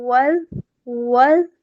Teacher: آگے دیکھیے گا واو زال زبر ول ول زال ہے بہت نرمی سے ادا کریں گے سیٹی کی آواز نہیں آنی چاہیے